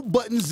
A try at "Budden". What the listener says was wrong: Budden. No S.